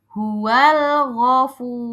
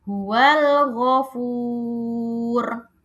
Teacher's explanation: roknya harus terdengar tebal atau tafkhim.